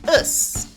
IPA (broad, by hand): əs